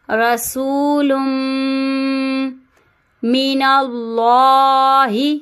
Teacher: اب اللہ کے لام سے پہلے زبر آ رہا ہے تو ہم اللہ کے لام کو پور پڑھیں گے